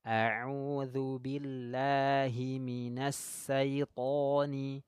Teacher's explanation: Huruf shin ya sifatnya atafashi. Menyebar angin.